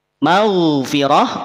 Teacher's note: huruf Gin tidak perlu dipantulkan ya huruf ghain